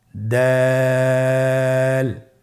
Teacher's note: দাল হরফটি বারিক হরফ। এই হরফটি উচ্চারণ করার সময় আমরা অবশ্যই 3 আলিফ টেনে পড়ব।